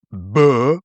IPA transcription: bɜː